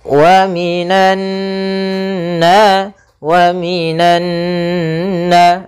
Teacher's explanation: Kemudian pada lafal nunnya di sini ada bacaan gunnah, yaitu nun yang berharakat tasydid. Maka cara membacanya yaitu suara nunnya atau suara an-nya ditahan. Wa minan, sepanjang 2 harokat.